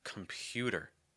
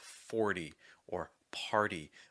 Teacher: You're much more likely to have the T become like a D sound, pronounced very quickly and weakly, like in a word like computer, especially when that T is surrounded by vowels.